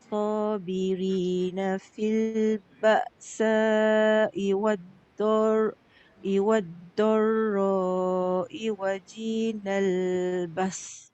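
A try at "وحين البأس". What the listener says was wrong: Wahi bukan waji. Wahinal ba's. Ha Kak, ha. Wahi. Kalau wahi jadi ha. Ha tengah. Wahi, ha pedas.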